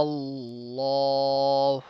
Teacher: Lam of Allah is also heavy because there is a zabar before it.